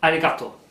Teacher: sound that's halfway between an r and an L you have to kind of it's obviously made by moving the